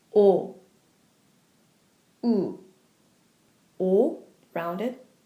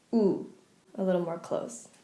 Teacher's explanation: also rounded, but your mouth is slightly more closed